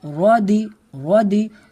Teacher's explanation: را کو پر کر کے پڑھیں گے کیونکہ را کے اوپر زبر ہے